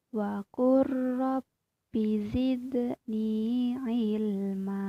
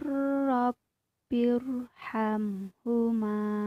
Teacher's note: cara bacanya ialah dengan memasukkan huruf pertama ke huruf kedua menjadi satu huruf yang bertasydid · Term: idgham mutaqaribain